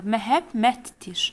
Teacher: Burada da uşaqlar məhəmmətdir. Yəni D, T-ya keçəcək.